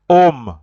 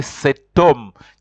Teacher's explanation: You have to join because the H there also is silent. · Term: liaison